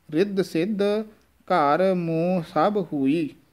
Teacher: ਘਰ ਮੋਹ ਸਭ ਹੋਈ, ਮੰਮੇ ਦੇ ਨਾਲ ਬਿੰਦੀ ਵੀ ਹੈ, ਮੋਹ ਨਾਸਕੀ ਉਚਾਰਨ ਹੀ ਹੋਵੇਗਾ